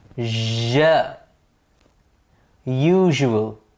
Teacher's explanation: You can feel the resonance in your chest and the vocal cords being vibrated. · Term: the Z sound